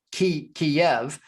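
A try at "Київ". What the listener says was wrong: it's Russian. Kyiv. It's Ukrainian way, and it's only right way because it's Ukrainian city and it should sound Kyiv.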